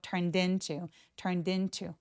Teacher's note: turned into라고 연음 처리돼서요 d가 in과 만나서 turned into turned into 하는데요 into는 중요한 단어처럼 보이지 않는데 왜 이렇게 강세를 주지라고 하시는 분들 계시나요?